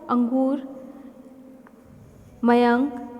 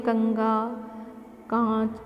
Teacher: इसकी ध्वनि नाक से निकलती है। अंग जब हम बोलते हैं कंगा, कांच, तो इस तरह से इनकी ध्वनि जो है वह नाक से बोली जाती है। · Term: अनुस्वार